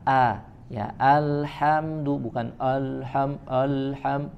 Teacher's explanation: Alhamdulillah pada kata Alhamdulillah pada surat al-fatihah maka a-nya ditipiskan